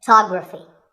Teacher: we say photograph but photography so the first syllable becomes and the stress goes to the second syllable